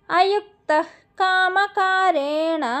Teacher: కాక ముందు వచ్చే విసర్గని ఆఫ్ విసర్గ పలకాలి కాబట్టి ఇక్కడ విసర్గకి హెచ్ సౌండ్ పెట్టుకోండి